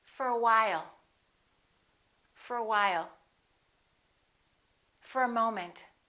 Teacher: to you all right let's look at what happens to four we reduce the o and it becomes uh